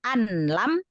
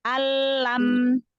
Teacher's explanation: Idgham, langsung masuk ke lam. Nunnya yang nggak dibaca. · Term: Idgham bila gunnah